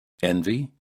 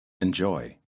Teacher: practice stressing and reducing the letter E in some common words the first word has a stressed first syllable and the E sounds like e and the second word has an unstressed first syllable with the E sounding like uh